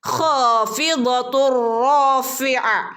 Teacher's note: നോക്കൂ, തെൻവീന് ശേഷം റോ വന്നു അല്ലേ. തെൻവീന് ശേഷം റോ വന്നാൽ കൂട്ടിച്ചേർത്ത് ഓതണം, പക്ഷെ അവിടെ മണിക്കാൻ പാടില്ല